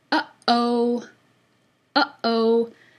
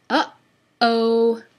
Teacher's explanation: Your glottis is the space between your vocal folds. So when you pinch your vocal folds together, it cuts off the airflow. So we want to lead into vowel sounds at the beginnings of words with a glottal stop so that our listeners don't hear a Y sound. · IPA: ʔ